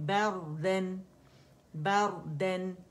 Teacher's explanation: را موٹی پڑی جائے گی کیونکہ را سکون سے پہلے ہمارے پاس فتح آ رہی ہے، ٹھیک ہے. با باریک ہے، با کو باریکی سے پڑا جائے گی.